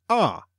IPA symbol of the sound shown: ɑ: